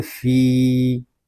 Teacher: فا یا زیر فی، یہاں یا مدہ ہوگا کیونکہ یا ساکن سے پہلے زیر آ گیا ہے. فا کو ہم ایک الف تک کھینچ کر پڑھیں گے، اور یہاں مد منفصل بھی ہو رہا ہے.